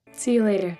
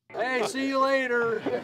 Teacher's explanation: a super high to low pitch variation shows a lot more energy and interest